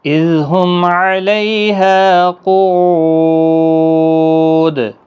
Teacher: لیالین ہے، ہا الف مدہ ہے، او واو مدہ ہے، اور قاف مستعلیہ ہے، پر پڑھنا ہے، دال ساکن پر قلقلہ ہوگا وقف کی صورت میں جب ساکن ہوگا، اور 3 سے 5 الف کی مقدار کے برابر کھینچ کر وقف بھی کریں گے۔